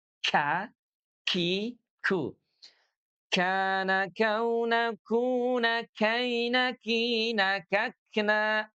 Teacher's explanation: Kalau kaf itu dia ringan istifal. K ada nafas yang mengalir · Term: huruf kaf